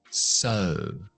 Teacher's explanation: el siguiente es la O larga. O. Labios fuera y redondas.